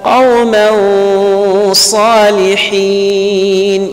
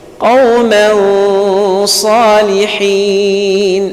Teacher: it is as though you are hiding the Nun Sakina. So it will be read between Al-Izhar and Al-Idghaam. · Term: Al-Ikhfa